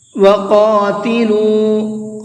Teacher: قاف کو پر کر کے پڑھیں گے، منہ بھر کے پڑھیں گے